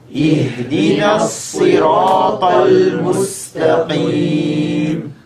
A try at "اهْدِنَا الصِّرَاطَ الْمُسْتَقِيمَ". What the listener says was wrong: So we don't say اهدنا no. What do we have? First letter kasra. Hamzat wasl, right? It has kasra. Then we have the ha. And what is the main attribute of the ha? It has hams, right? مهموسها فحثه شخص سكت. So say اهدنا الصي.